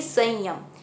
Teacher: स को ऐसे बोलेंगे कि स की आवाज़ नाक से निकले, संयम, और ठीक उसी के बाद हमें य का पूरा उच्चारण करना है, संयम।